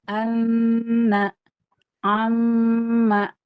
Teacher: nun tasdid ada plus sama mim tasdid tawasud plus ghunah